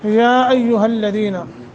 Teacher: मद्द मुनफसल है 2 से 2.5 अलिफ के बराबर इसको लंबा करेंगे